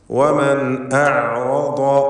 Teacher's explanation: ഐനിൻ്റെ ഉച്ചാരണം തൊണ്ടയുടെ മധ്യമാണ്, അതിൻ്റെ മഖ്റജ് എന്നത് ശ്രദ്ധിക്കുക, വ്യക്തമായി മഖ്റജിൽ നിന്ന് തന്നെ വരണം അതിൻ്റെ ശബ്ദം.